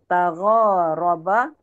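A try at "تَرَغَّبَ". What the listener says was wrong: Hurufnya tertukar lagi.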